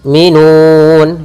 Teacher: Kemudian yu'minun, yaitu kita matikan di lafal hamzah. Hamzah itu punya sifat namanya sifat syiddah, yaitu ketika melafalkannya itu suaranya tertahan